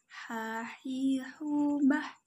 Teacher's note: Cara melafalkan huruf ha adalah dikeluarkan dari tengah tenggorokan kita. Ketika dilafalkan, persis seperti kita melafalkan kata ayah dan sah.